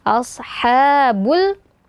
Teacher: ha-nya ha yang keluar dari tengah tenggorokan, alirkan suara dan nafasnya ya